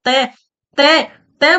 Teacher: त त बोलते हैं तो जीभ हमारी दांतों से स्पर्श करती है। इसलिए इसको दंत कहा गया है।